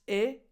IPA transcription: ɪ